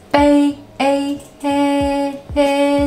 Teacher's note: the first tone is relatively high, like you are singing, and you cannot drop it